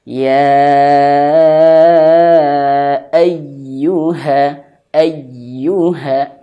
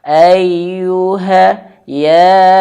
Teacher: ya bertasdid harus ditekan ya